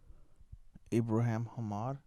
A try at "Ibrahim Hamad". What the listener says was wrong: Ibrahim. Ibrahim Hamad. Yeah, it's not Abraham. It's like Ibrahim.